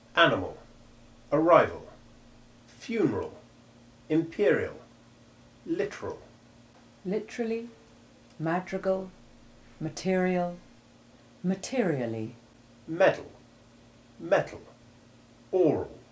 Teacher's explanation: the short a2 sound is almost always the sound of the letter a in the word ending al when this syllable is unstressed